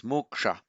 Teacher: a sa immediately following a k in the same word automatically is retroflected, becomes moksha. So moksha, liberation.